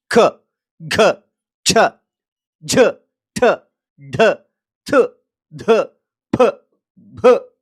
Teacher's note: ಮಹಾಪ್ರಾಣ ಅಕ್ಷರಗಳು ಕೈ ಇಟ್ಟಾಗ ತುಟಿಯ ಮುಂದಿಟ್ಟಾಗ ಗಾಳಿ ಪಟ್ ಅಂತ ಬಡಿಯುತ್ತೆ